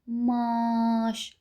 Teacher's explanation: A-nı uzadıram, amma mən M-nı uzada bilmirəm. Əgər M-nı uzadırsansa, sən orada təkcə M hərfini uzatmırsan. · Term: uzanma